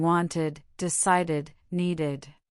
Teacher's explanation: if the base verb already ends in aid sound, we add a whole extra syllable.